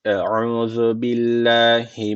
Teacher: Billahi derken Allah lafzı burada ince okunması gerekiyor. Neden? Çünkü öncesindeki harfin harekesi altta.